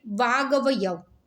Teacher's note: કે તમે જોતા હશો કે આપણે ઉદાહરણ આપીએ કે વાક વત્તા અવયવ, તો પછી બોલીએ ત્યારે વાગ અવયવ, બંને કનું ઉચ્ચારણ કરતા ગનું ઉચ્ચારણ થાય છે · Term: સંધિ